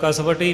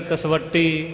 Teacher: ਕਸਵੱਟੀ ਵਾਵੇ ਦੇ ਉੱਤੇ ਵਜਨ ਦੇ ਕੇ ਕਸ ਕੇ ਹੀ ਬੋਲਿਆ ਜਾਵੇਗਾ